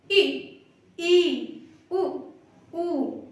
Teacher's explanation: बहुत बहुत बहुत थोड़ा सा मुंह खुलेगा, मतलब लगभग ना के बराबर ही खुलता है। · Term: समृद्ध स्वर